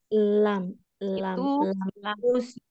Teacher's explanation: tepi lidah secara bersamaan melebar bertemu dengan gusi atas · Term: huruf lam